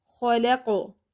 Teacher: قاف موٹا حرف ہے اور سکون کی حالت میں یعنی کہ جب اس پر ساکن حرکت ہوگی تو آواز بھی بند ہوگی اور سانس بھی بند ہوگی، اور سکون کی حالت میں قاف پر قلقلہ ہوگا۔ مثال کے طور پر خلقو، جب ہم خلقو پڑھتے ہیں تو آواز بھی بند ہو رہی ہے، سانس بھی بند ہو رہی ہے اور قاف پر قلقلہ ہو رہا ہے، قاف ساکن پر۔